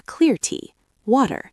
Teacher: The classic example is water. In British English, you might hear a clear t